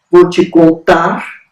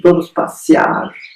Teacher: a tendência no Brasil é apagar essa consoante no final do vocábulo